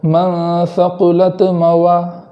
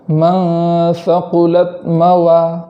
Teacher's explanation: اور اسی کلمے کے آخر میں تا پر جزم ہے، تو آگے والا کلمہ پڑھنے کے ساتھ اس بات کا خیال کرنا ہے کہ تا پر زبر نہ ہو جائے، جیسے من ثقلت موا، ثقلت اس طریقے سے نہ ہو، بلکہ تا میں بالکل آواز بند ہو جائے اور پھر آگے والا حرف ادا ہو